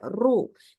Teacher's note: Kemudian al-dhammah sama area al-dhammah ada ro yang didomahkan. Ini wajib kita baca dengan tafkhim biar tebal ru. Jadi jangan cuman sekedar ru ru.